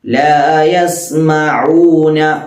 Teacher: ഐനിന്റെ മഖ്റജ് വസ്തുൽ ഹൽഖ്, തൊണ്ടയുടെ മധ്യഭാഗത്ത് നിന്ന് പുറപ്പെടണം.